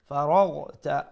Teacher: letter ghain pronounce it from top of the throat